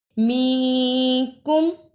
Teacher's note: اخفا ادا کرنے کا طریقہ نون ساکن کی آواز کو تھوڑی دیر ناک میں چھپا کر غنہ کرنا ہے.